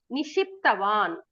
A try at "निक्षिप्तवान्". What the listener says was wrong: Nikshiptavan. The ksha you have to pronounce correctly. It is not nishiptavan. It is not sha, Shankara sha. It is ksha. So nikshiptavan, the ksha you have to pronounce correctly.